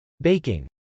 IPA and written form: bˈeɪkɪŋ (baking)